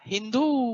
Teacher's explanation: वैसे ही फारसी लोग स का उच्चारण ह करते हैं